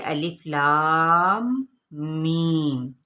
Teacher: لام کو ہم نے 6 حرکات کے برابر کھینچنا ہے اور پھر میم پہ باقاعدہ طور پہ غنہ کیا جائے گا کیونکہ میم مشدد ہے، اور پھر جب میم کو ہم کھینچیں گے تو یہاں پہ یائے مدہ ہوگی، ٹھیک ہے۔